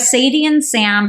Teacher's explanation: the beginning obviously of Sadie and Sam are your first characters you're really leaning into the sibilant sound which is that s sound